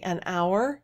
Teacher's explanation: in the word hour the h is not aspirated